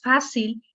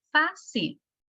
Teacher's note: lleva su sílaba tónica en fa, fácil